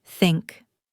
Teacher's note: This is a voiceless dental fricative.